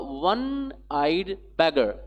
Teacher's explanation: Here, one-eyed beggar is a noun phrase, and this noun phrase begins with wa. Here, no doubt there is o, but the sound is wa.